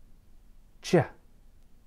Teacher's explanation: When you add the two sounds together, you get ch. Similarly, the ch sound starts with the stop sound d, and then moves to a fricative sound, zh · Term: affricate